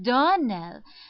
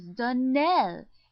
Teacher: Accent on the last syllable.